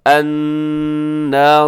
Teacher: اس میں نون مشدد ہے، آپ نے غنہ کرنا ہے